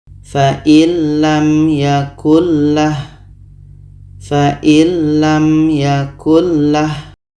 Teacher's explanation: Bunyi nun kita masukkan ke la dan tidak ada dengung. Kita baca fa'il lam yakullah, fa'il lam yakullah. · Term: idgham bila gunnah